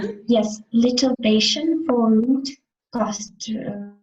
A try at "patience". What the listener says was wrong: be careful. Patience. Pronounce S because patience and patient, that is different. One, okay, one is noun, one is adjective.